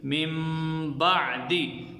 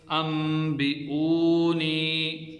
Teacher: اب دیکھیں یہاں پر نون ہے لیکن نون ساکن کے بعد با آ گیا، اس وجہ سے ہم نے نون کو میم سے بدل دیا اور چھوٹی سی میم لکھی بھی جاتی ہے۔ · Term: اقلاب